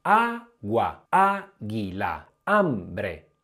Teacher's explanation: oltre ad iniziare con la a hanno tutte la prima sillaba tonica